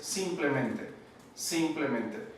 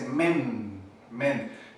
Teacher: tiene un acento primario que afecta la sílaba donde dice men, men. Entonces, simplemente, entonces la sílaba acentuada con un acento secundario es la primera sílaba, simplemente.